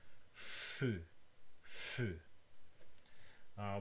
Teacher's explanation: This is a sound from Japanese, which is the friction between two lips. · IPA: ɸ